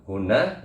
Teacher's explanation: ada tasjid ya. Jadi dibaca hunna, yaitu ditahan.